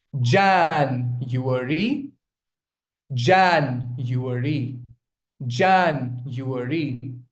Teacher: That's why it is a 4-syllabic word. But the stress is on the first syllable.